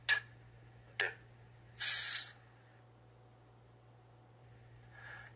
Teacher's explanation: Alveolar sounds are produced with the tongue at or near the ridge right behind the upper front teeth